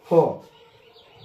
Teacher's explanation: फ भी बोलने में आपका दोनों ओष्ठ चिपकते हैं, इसीलिए फ का ध्वनि ओष्ठ होता है, इसलिए उसको ओष्ठीय वर्ण कहते हैं।